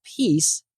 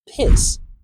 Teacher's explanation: So without the right placement, this E as in she vowel often sounds like an I as in sit vowel.